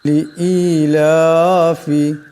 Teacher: ই এবং লা এই দুইটাকে একালিপ লম্বা করতে হবে।